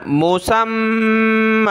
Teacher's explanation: أَجَا لِم مسمّى, سین کو میم کے ساتھ ملایا, سین میم زبر سم, میم دو زبر من, سمن. جب رکیں گے تو میم کو آخر میں کھینچ دیں گے, یا کو نہیں پڑھنا